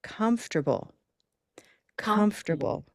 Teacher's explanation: So, first I use the hand to locate the location of stress, first syllable.